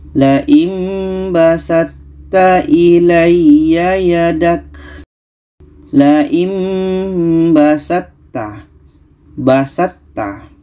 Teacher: sama-sama ujung lidah bertemu dengan pangkal gigi seri atas maka tho ini kita masukkan ke ta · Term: idgham mutajanisan